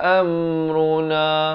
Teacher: Am ni izhar syafawi, jangan dipanjangkan. Sempurna saja mim mati terus masuk runa